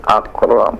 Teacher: Ada nafas mengalir ketika huruf kaf yang disukunkan.